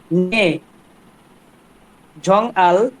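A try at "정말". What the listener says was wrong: ঝংমাল। প্রশ্ন করতেছে না তো। নর্মাল টোনে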